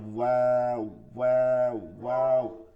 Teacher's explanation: আর নরম এবং আপনার চাপ দিয়া, গলার মধ্যে চাপ দিয়া চিকন আওয়াজে করতে হবে আইন, ঠিক আছে, নরম দুই ঠোঁট গোল করিয়া এক আঙ্গুল পরিমাণ ফাঁকা রাখিয়া ওয়াও উচ্চারিত হয়